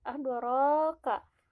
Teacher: Adoro masih mad tabi'i, panjangnya dua harkat.